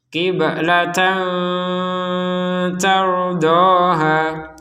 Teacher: Falanuwalliyannaka qiblatan tardaha. Ada tanwin bertemu tak, maka kita membacanya dengan samar.